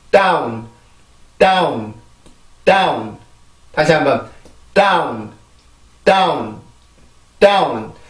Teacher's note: 치조를 혀를 이용해서 완전하게 막아준 다음에 목에서 올라오는 공기를 한번 막았다가 이렇게 내보내는 소리예요. · 아까 말했던 그 개구리가 점프 뛸 때 준비 동작을 하듯이 이 D 발음을 이용해서 준비 동작을 해주는 거예요. 그래서 준비 동작인 D 발음을 해줄 때는 내가 그 치조를 막고 있는 혀의 힘을 훨씬 더 강하게 줘서 목에서 올라오는 공기를 더 이제 세게 만들어 주는 거예요.